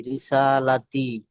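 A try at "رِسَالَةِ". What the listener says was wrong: হয়নি, টান হয়নি। হ্যাঁ, রিসালাত, এটা পড়েন।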